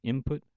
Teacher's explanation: the N, or the N sound, often becomes pronounced as M in the word input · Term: regressive assimilation